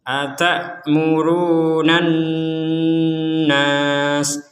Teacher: nan di rongga hidung kita ada dengungan. Atamurunnan nasa bil birri wa nah ini ada kita samarkan, nun sukun bertemu dengan sin.